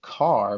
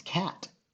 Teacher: the R changes how we say that that vowel sound that comes before it